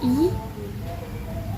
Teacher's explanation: bentuk bibir tidak bulat yaitu melebar